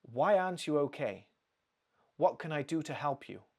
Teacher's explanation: when the question is open, you want some more information, your pitch, your intonation actually goes down.